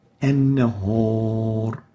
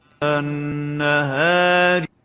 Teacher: And the example is an-nahar, O instead of A, O is velarized, A is muraqqaq, attenuated. So the proper way of pronouncing this alif is النهار.